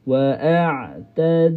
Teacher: huruf ain berada di tengah halqu. Waadna mulut berada, lidah berada di bawah. · Makhraj dan juga sifat huruf ain tidak melibatkan lidah. Jadi lidah kita tu, lidah kita bila sebut ain dia terletak a kita kena kontrol dia.